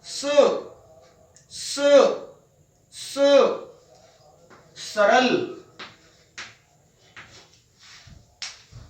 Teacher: ये है दंत्य स, यानी दांतों की सहायता से बोला जाता है। जब हम इसका उच्चारण करेंगे तो जीभ दांतों की तरफ जाएगी